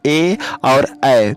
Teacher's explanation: जिन वर्णों का उच्चारण करते समय कंठ और तालु दोनों की सहायता पड़ती है ऐसे वर्णों को हम कंठ तालव्य वर्ण कहते हैं